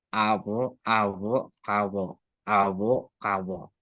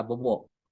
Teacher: saya bisa jelaskan bahwa itu bunyi frikatif bilabial